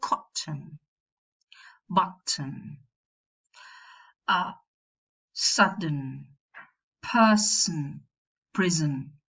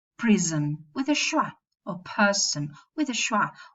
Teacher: Some people make the nasal syllabic, and some people pronounce a vowel before the nasal.